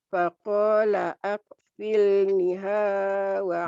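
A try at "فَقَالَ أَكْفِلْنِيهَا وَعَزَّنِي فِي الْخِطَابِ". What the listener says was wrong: ninya panjang.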